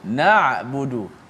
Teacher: Okey, ain yang mati sebelum bagi depan. Tengok huruf ain ni bila dia mati. Lepaskan sedikit suara ain.